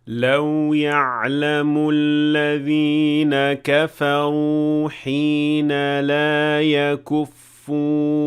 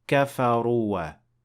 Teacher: kafaru ends with an alif, but you will not pronounce it. You will not say kafaruwa.